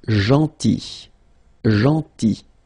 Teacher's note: remember this final L is not pronounced